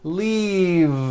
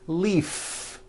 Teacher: with a voiced V keep the voice in going throughout the whole word and voice the V